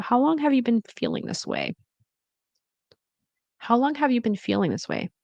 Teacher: And the intonation slightly rising expresses curiosity.